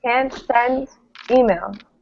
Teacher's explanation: we kind of stress can't send an email